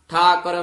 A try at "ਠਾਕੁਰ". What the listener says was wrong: ਠਾਕਰ ਨਹੀਂ ਹੈ, ਕੱਕੇ ਓੰਕੜ। ਠਾਕੁਰ ਮਹਿ ਠਕੁਰਾਈ ਤੇਰੀ।